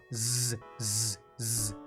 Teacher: Z would be voiced because your vocal cords are together when you say it. Z, z, z. It's the same as the difference between a d sound and a t sound.